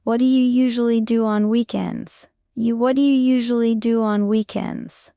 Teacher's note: Do you often sounds like dia in fast speech?